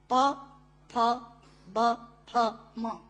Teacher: प, फ, ब, फ, म दोनों होंठ मिलाकर बोले जा सकते हैं। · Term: पवर्ग